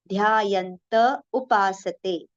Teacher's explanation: Between ta and u, there should not be any gap.